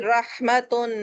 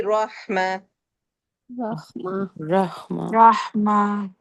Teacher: تینوں صورتوں میں گول تا ہمیشہ ہاں میں کنورٹ ہو جائے گا، ہائے ساکن میں · اگر میں اس کو ریگولر پڑھوں گی نا، رواں پڑھوں گی، تو میں پڑھوں گی رحمتن تا کے مخرج سے